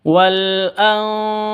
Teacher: Anfa nun mati bertemu dengan fa, samar, didengungkan, siap-siap ke huruf fa-nya. Kenapa? Karena ikhfa hakiki.